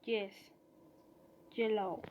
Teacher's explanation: The phoneme J has palatal articulation point, that is, it is produced when contacting the tongue with the palate.